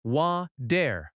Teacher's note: Water in American English often has a soft t sound. It sounds like wa-der.